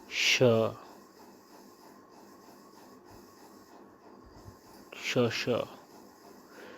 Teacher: श का उच्चारण स्थान तालु है